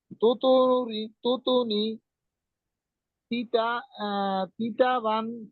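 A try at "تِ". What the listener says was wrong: তি না, তি হবে না। তুই তুই তুই ত।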